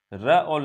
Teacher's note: र और ल आपका दंत मूल व्यंजन है